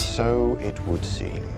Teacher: no final da frase, ele fecha a boca. É o som do M.